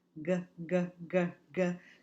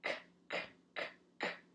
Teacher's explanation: if I turn my volume off, make it quiet, it says k